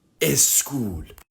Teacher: In Farsi, words do not usually begin with these clusters. So speakers tend to add a vowel sound like e to the beginning of the word to make it easier to pronounce. This type of vowel addition to the beginning of a word to make it easier to pronounce is called prothesis.